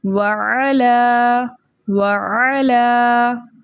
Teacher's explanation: یہ لام باریک ہے کیونکہ لام جلالہ کا لام نہیں ہے